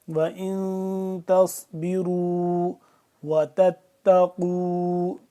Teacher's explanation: صاد کو موٹا کر کے پڑھیں گے، اس را کو بھی موٹا کر کے پڑھیں گے